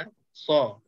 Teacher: huruf sad ini dia beza sikit sebab dia tebal. Bibir mulut pun dah berubah dan kedudukan belakang lidah pun dia terangkat sikit. Sebab dia nak tebalkan sad tu dan dia ada tiupan lebih sikit berbanding dengan zai dengan sin.